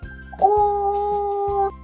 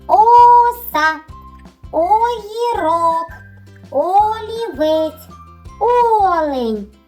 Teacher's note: рот широко відкритий губи округлені звук о вимовляється легко в ротику цей звук не зустрічає ніяких перешкод вільно вилітає з твого ротика О тепер буду називати різні звуки